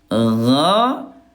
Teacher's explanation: kalau gin dia jahr, ayah bunda ya, tidak ada udara ya